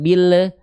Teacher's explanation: Lam sukun, hati-hati jangan memantul Bunda.